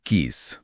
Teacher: स बोलते समय हवा दांतों के बीच से एक सीटी जैसी आवाज के साथ निकलती है। इसे दंत ध्वनि कहते हैं।